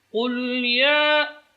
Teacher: huruf qaf keluar dari pangkal lidah.